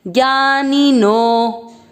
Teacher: अवग्रह यानी नो की मात्रा को आपको उच्चारण में अधिक समय देना है